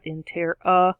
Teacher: Schwa, that sound in the third syllable spot.